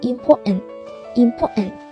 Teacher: Còn với từ important thì mình thấy chữ TN đứng cạnh nhau đúng không? Thế thì chúng ta sẽ đọc một chữ N thôi, còn chữ T câm